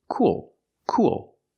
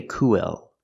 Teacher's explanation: don't pronounce the word co co the word is cool cool we have the oo sound like Moon and soon plus the dark L